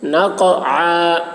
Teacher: قاف میں قلقلہ. عین کو حلق سے